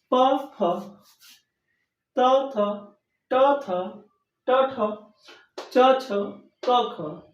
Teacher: बोलते समय मुह के अंदर किसी भी प्रकार का कंपन हुआ ही नहीं